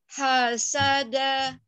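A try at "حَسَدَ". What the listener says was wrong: Kalau ha masih di bawah nih. Ha. Bukan ha, tapi ha. Naikkan. Hasada.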